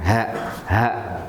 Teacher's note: ha ini munculnya dari pangkal leher. Aksal halqi, pangkal leher.